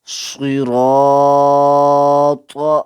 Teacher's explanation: الف سے پہلے را حرف پر آ گیا تو الف کو بھی پر پڑھا جائے گا۔